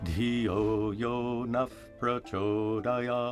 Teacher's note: जिह्वा मूल्य या फिर द ख साउंड तब आता है जब विसर्ग क के सामने हो, और उपदमन्य यानी द फ साउंड वो तब आता है जब विसर्ग प के सामने हो. When a visarga is followed by a pa or pa, it's pronounced as an F sound.